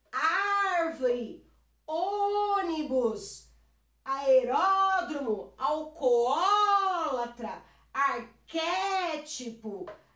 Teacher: a minha proparoxítona em que a antepenúltima é mais forte